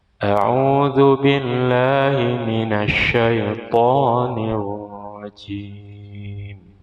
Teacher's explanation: Mestinya ra pertama tarqiq karena sukun sebelumnya kasrah, ra kedua tafkhim.